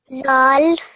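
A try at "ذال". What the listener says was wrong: Make sure the tip of your tongue is touching your top front teeth. Makes a th sound.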